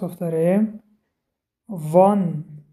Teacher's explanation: Буква «За» образуется, когда передняя часть языка касается кончиков верхних передних зубов. Это означает, что кончик языка находится между зубами.